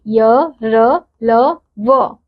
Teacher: के बीच का सा होता है उन्हें अंतस्थ व्यंजन कहते हैं इन वर्णों का उच्चारण करते समय जीभ मुंह के किसी भी भाग का पूरी तरह से स्पर्श नहीं करती है ये संख्या में चार होते हैं जैसे य र ल व